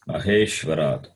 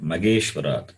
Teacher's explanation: generally we have problem in pronouncing this Maha, Mahe. We replace it by the H by G.